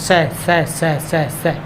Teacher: सह जो है सह सह सह सह सह नॉर्मल सह, तो जीभ जो है आगे दांत को टच कर रही है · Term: ऊष्मीय वर्ण